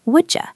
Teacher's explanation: You starts with a Y sound. When they hit each other, the D and the Y blend into a J.